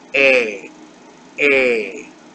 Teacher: Now, this sound is very similar to the sound in the English word day. Except you just don't add the Y glide. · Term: sere